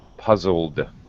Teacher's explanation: Okay, your vocal cords are vibrating with the L, puzzle. So now our ed has a D sound, but no extra vowel sound.